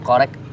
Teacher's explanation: Nah, ada hamesnya. Jadi nggak berhenti pada kata koreknya saja, melainkan langsung dikeluarkan percikan nafasnya.